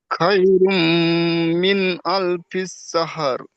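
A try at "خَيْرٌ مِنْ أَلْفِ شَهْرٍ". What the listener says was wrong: শাহর। জি, লাস্টে রটা হালকা করে উচ্চারণ হবে, এমন ভাবে উচ্চারণ হবে যেন হায়ের উপরে জবর না হয়ে যায়। শাহর। আলফি শাহর। লাইলাতুল কদরি খায়রুম মিন আলফি শাহর।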